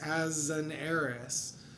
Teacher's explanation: the S in as carries over as a Z sound and it connects or elides to the next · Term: liaison